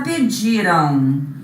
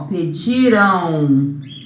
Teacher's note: Eu não pronuncio esse M como uma consoante. Eu pronuncio esse M como se fosse, ó, aproxima aqui, ó, um aotil. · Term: ditongo